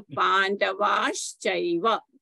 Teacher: Visarga followed by a cha becomes a sh, right? So Pandavash Chaiva. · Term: sandhi